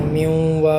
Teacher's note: پورا غنّہ کر کے بھی ہم ملا سکتے ہیں، پورا غنّہ نہ کریں تھوڑا سا غنّہ کر کے میوں وا کر دیں، تو یہ دونوں طریقے ہی درست ہیں۔